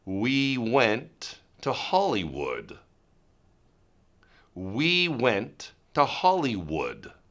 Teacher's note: with the W sound it's just the lips there are no teeth involved